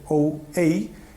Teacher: El dialecto occidental caracterízase pola presencia de unos diptongos que chamamos decrecientes, ou, ei, en palabras como cousa, caldeiro.